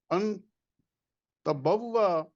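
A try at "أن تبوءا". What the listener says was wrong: انت بوا لمبا کر دیں ذرا اس کو. تبوا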